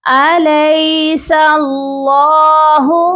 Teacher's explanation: اللہ کے لام کو ہم نے موٹا بھی پڑھنا ہے اور ایک الف کی مقدار لمبا بھی کرنا ہے